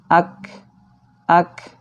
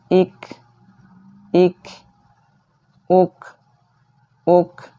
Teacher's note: Karena kaf tidak termasuk huruf qalqalah, jadi tidak boleh dipantulkan.